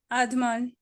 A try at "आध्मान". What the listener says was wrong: हाँ, आद्यमान नहीं बोलना है, आपने आद्यमान बोला था, बाकी सब आपका बहुत अच्छा है।